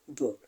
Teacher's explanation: B is a voiced consonant sound because the vocal cords vibrate when we pronounce B.